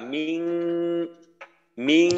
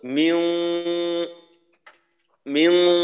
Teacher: আর একটা হলো এই ইকফা গুণ, এখানে একেবারে পাতলা মিং মিং, আর একটা হলো মিউং মিউং, এখানে একটু মোটা ভাব থাকে, মিং একেবারে পাতলা হালকা ভাবে মিং সিজিল।